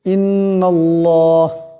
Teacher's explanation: আল্লাহর লামের ডাইনে জবর আসছে আল্লাহর লামকে মোটা করিয়া পড়তে হবে